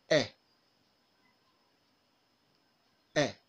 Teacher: This is a short vowel. It is a front, half open, lax, and unrounded vowel.